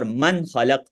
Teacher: نون کو آپ ظاہر کریں گے غنہ کے بغیر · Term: اظہار